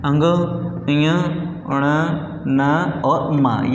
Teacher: नासिका वे व्यंजन जो कंठ, तालु, मूर्धन्य, दंते और ओष्ठ के साथ साथ नाक से भी उच्चारित होते हैं, उनको हम नासिक व्यंजन, नासिकीय व्यंजन बोलते हैं।